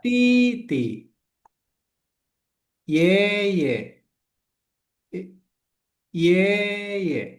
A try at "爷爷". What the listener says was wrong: 爷爷。 Ye, ye. Tuh, Cingsen. Yang terakhir yang paling penting adalah Cingsen. Jangan dua-duanya jadi ye, ye. Cingsen itu yang netral tuh, Cingsen. Ye, ye.